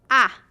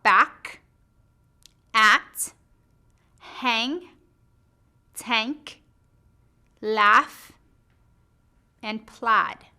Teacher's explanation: Your lips are spread and your mouth is open. Your tongue is low near the floor of your mouth. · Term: short A sound